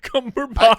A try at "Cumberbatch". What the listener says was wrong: Not that way with a lack of confidence towards the end. Cumberbatch.